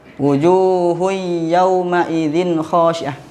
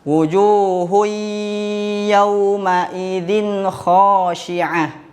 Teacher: Ingat kata ustaz tadi kalau idgam bigunah itu kita satukan bunyi nun sukun dan tanwinnya ke huruf idgham bigunah disertai dengan dengung